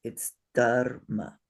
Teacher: Because the R is written on top, close to, in connection with the letter it is compounded with. There is no vowel in between the ra and the ma.